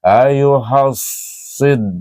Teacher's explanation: Huruf sad adalah huruf istillak meninggi pangkal lidah. Tebal bunyinya. Ayyuhasid. Shad ya dal sid di dibaca asli. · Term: huruf isti'la